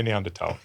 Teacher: in 19th century German, the word was written with an H, but the H was never pronounced